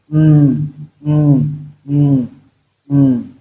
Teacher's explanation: that's your two lips you close completely then the sound will come out of your nose